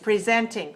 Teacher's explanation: But here, this is a verb. To present is a verb. So the stress is on the second syllable. So we need to say presenting.